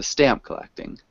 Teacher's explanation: we want to emphasize the stamp, so stamp collecting.